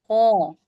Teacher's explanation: ख हलक के इदाई यानी मुंह की तरफ वाले हिस्से से अदा होता है।